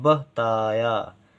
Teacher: ताया देर तक बोला जा रहा है, ता और या, और बा कम देर तक बोला जा रहा है, बह ताया। तो हो गया बा खाली, ता में बड़े आ की मात्रा, बड़े या में बड़े आ की मात्रा, बताया।